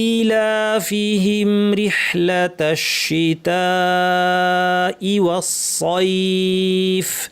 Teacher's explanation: শেষের ফায়ের আওয়াজ শোনা যায়, বাতাস থাকবে, আওয়াজ থাকবে, স্পষ্ট আওয়াজ